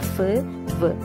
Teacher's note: lower ലിപ്പും മുകളിലെ പല്ലും ചേർത്തിട്ടാണിത് ലേബിയോ dental എന്ന് പറയുന്നത്